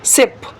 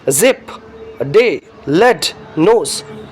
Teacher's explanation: Tooth ridge is the passive articulator and tip of the tongue is the active articulator. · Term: alveolar